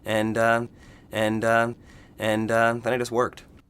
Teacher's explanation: the intonation of the voice is going up at the end and signaling comma not a period more information coming and and and that I just worked